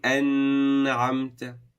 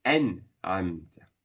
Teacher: Ain being a throat letter, you would not stretch on the Nun Sukun. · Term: Idhaar